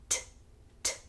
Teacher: when we say T, T, our vocal cords are not engaged. Because our vocal cords are engaged or not engaged, we get different consonant sounds.